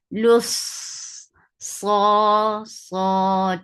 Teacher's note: focus راجل E sound لص for the circle ellipse attached صاد صاد will get صفة of رخاوة it is heavy and it has سفير